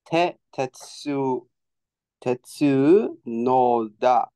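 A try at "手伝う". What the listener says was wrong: You forgot one hiragana character. Tetsu u. Tetsu. Nope. You're missing a hiragana character here.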